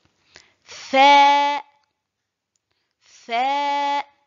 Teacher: Le fa se prononce en appuyant l'extrémité des incisives supérieures sur l'intérieur de la lèvre inférieure.